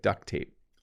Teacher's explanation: We don't quite though say the T on duct.